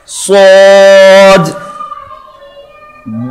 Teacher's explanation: سین بیٹا باریک پڑھتے ہیں, صاد موٹا پڑھتے ہیں, نکلنے کی جگہ ایک ہے بٹ یہاں پہ زبان کو ہم تھوڑا سا گول کرتے ہیں جس کی وجہ سے صاد کی دفعہ میں آواز ہماری موٹی معلوم ہوتی ہے